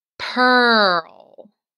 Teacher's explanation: Notice how I'm not making the E or the A sound? I only am making the er sound.